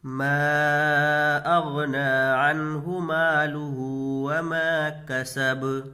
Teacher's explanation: ما اغنى عنه ماله وما كسب، یہاں میم کو کھینچ کر کے پڑھیں گے، مد منفصل کا قاعدہ ہوگا، اس لیے کہ حروف مدہ کے بعد حمزہ دوسرے کلمے میں ہے، اس کو کھینچ کر کے پڑھیں گے۔ اغنا، یہاں پر غین کے اوپر جزم ہے اور جزم والے حرف کو ساکن بولتے ہیں، اس کو پیچھے والے حرف سے ملا کر پڑھیں گے۔